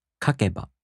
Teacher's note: In the downstep-type verbs, the accent falls on the third to the last mora. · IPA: [kaꜜkeba]